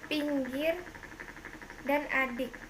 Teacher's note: vokal depan tinggi bawah tak bundar tertutup